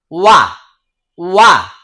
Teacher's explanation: দেখেন ওয়াও বলার সময় দুই ঠোঁট গোল হয়ে যাচ্ছে।